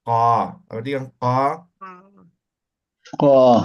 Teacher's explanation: Del punto de la manzana y de la garganta pronuncio ka.